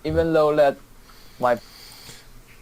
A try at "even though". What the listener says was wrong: Okay, so sometimes this person does have problems saying the v sound. Like for example here, he says even low. It's not low, it's even though.